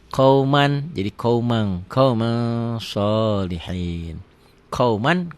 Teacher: Tulisan dan bacaan beda. Ditulisnya ada n-nya, dibacanya n-nya tambah g jadi eng.